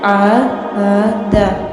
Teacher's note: آپ نے عین کی آواز کو حلق سے نکالنا ہے